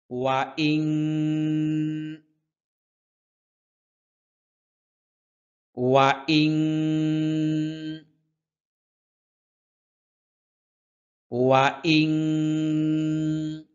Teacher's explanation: ওয়া বললে দুই ঠোঁট গোল হয়